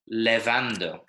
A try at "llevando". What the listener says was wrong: No, llevando. Missing an L. Llevando.